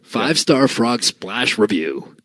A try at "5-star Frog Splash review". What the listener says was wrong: There was a pause right before that splash. I heard it.